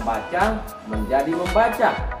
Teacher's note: bunyi M memiliki kesamaan fonologi dengan bunyi B pada posisi awal pada kata dasar baca itu sendiri, yaitu sama-sama bunyi bilabial. Sedangkan bunyi N atau bunyi Ng tidak memiliki kesamaan sama sekali, karena bunyi N itu adalah bunyi nasal dental alveolar, sedang Ng itu adalah bunyi nasal dorsovelar.